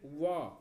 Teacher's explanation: व के उच्चारण में दंत और ओठ दोनों का सहयोग होता है। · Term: दंतोष्ठ